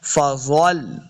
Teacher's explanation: زوا بھی حروف مستعلیہ سے، اس کو موٹا پڑھنا ہے۔ فضل، آگے لام کے ساتھ لانا ہے، لام ساکن ہے۔